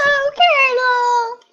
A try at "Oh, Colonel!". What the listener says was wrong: You gotta sound more like you're flirting. Like, oh, Colonel!